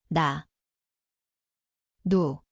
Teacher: 니은, See kõlab nagu koht on keeleots, ülemine igeme.